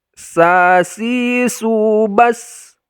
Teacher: ujung lidah kita tempelkan ke gusi bagian bawah